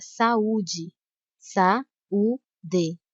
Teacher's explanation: a letra a e a letra U são pronunciadas com a mesma intensidade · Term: hiato